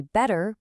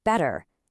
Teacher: whenever a T gets squished between two vowel sounds, Americans get a little lazy with it and soften it into a quick light D sound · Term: flap T